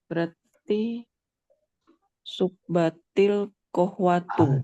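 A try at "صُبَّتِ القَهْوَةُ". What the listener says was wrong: Jayyid. Masya Allah, subbatil qahwatu.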